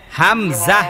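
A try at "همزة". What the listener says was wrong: না নরম হবে না, এই আপনি যা বলতেছেন।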